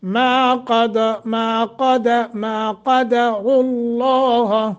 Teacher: ما کے اوپر 1 سیکنڈ کی مد ہوگی، قاف موٹا کریں گے، را کو بھی موٹا کریں گے، لفظ اللہ بھی موٹا ہوگا